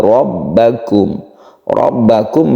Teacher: rnya ini juga tebal disebabkan dia itu berfathah namanya ro tafkhim